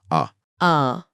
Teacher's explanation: यही इकलौता स्वर है जिसे बोलते समय मुंह अपने अधिकतम आकार में खुलता है और गले के अंदर का पूरा दृश्य साफ दिखाई देता है। · विवृत का अर्थ है पूरी तरह खुला हुआ मुख